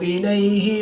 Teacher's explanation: या साकिन से पहले लाम पर ज़बर है तो या लीन इसको लंबा नहीं करेंगे।